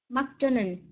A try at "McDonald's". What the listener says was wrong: Be careful a little bit with your S, huh?